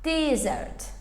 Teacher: Və vurğu birinci hecaya düşür.